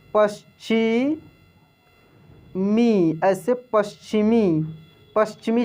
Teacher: PASHCHIMI, तो PA तो प, S ऐसे तालव्य श, आधा तालव्य श होगा च के साथ